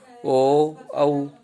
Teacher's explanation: ओ, औ की ध्वनि है वो कंठ से निकल रही है, लेकिन होठों का भी प्रयोग किया जा रहा है, इसलिए होते हैं कंठोष्ठीय वर्ण।